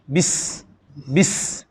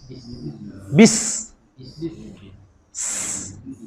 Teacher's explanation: sin ni sifat bacaan dia kena keluar angin bagi kuat, lontarkan angin bagi kuat. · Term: huruf safir